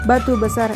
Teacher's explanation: Pelafalan bibir bawah dan atas rapat. Udara dari paru-paru tertahan sebelum kerapatan dilepaskan. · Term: Konsonan